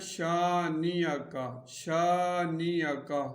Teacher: یہاں پر بھی غنہ ہوگا، اور شین کے بعد الف ہے، الف مدہ ہے تو اس کو ایک الف کے برابر کھینچیں گے اور اس کاف کو بھی باریک پڑھیں گے، شانیہ کا، شانیہ